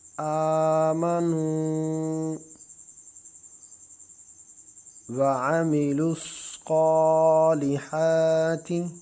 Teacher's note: صاد کو موٹا کر کے اور ایک الف کی مقدار کھینچ کر پڑھیں گے کیونکہ اس کے اوپر کھڑا زبر ہے